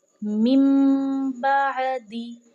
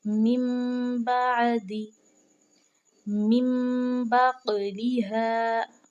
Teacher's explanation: تو اب ہم نے اس کو کیسے پڑھنا ہے یہ دیکھ لیتے ہیں، جیسے کہ مم بعدی، اس میم سے ہم نے ملانا ہے، نون کو ہم نے شو نہیں کرنا، نون کی آواز کو ہم نے چھپا دینا ہے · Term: اقلاب